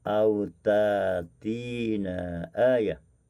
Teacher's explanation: Dan seterusnya apabila bertemu dengan hamzah mufrad seperti pada ayat yang ke-118 pada kalimah au ta'tina, maka hamzah mufrad diibdalkan kepada alif mad